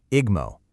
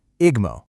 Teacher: It actually inserts a vowel sound that wasn't physically there just to make the word follow the rules.